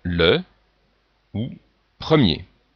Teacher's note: Ici, le son E, donc qui est beaucoup plus fermé que les autres